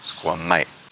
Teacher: The word for dog is sqəmay. There's a glottal stop at the end. It's not sqəmay, it's sqəmay, and it stops.